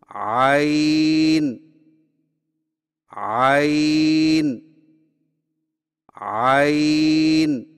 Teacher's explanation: زبان کی جڑ کو حلق کی طرف مضبوطی سے دباتے ہوئے باریک اور رگڑ کھاتی آواز میں پڑھیں